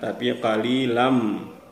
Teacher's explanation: Jadi tidak qalilan tapi qalilam. Qalilan, kalau kita baca qalilan itu terdengar jelas bunyi tanwinnya. Tetapi di sini kita baca masuk ke bunyi mim. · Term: idgham